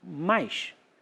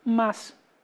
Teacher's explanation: eu sou do Rio de Janeiro, eu falo esse S chiado